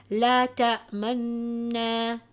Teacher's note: the weakening of the sound of this vowel of dhamma but only one third can be heard of the sound